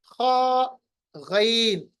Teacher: पहला जो गले का हिस्सा है, वहां से इनको हमें अदा करना है